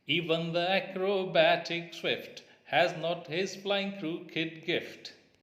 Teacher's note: one unstressed syllable followed by a stressed one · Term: iambic